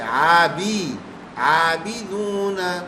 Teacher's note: زیر کی آواز صحیح کریں گے، آبے بے نہیں ہونا چاہیے، آبی